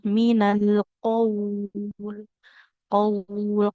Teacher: Yang panjang bukan qafnya, bukan qaul, tapi aliran dari suara huruf wawnya. Nah, jadi qafnya dia tetap kita baca pendek ya, sebagaimana di sini qafnya fathah tanpa alif, maka pendek. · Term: matlin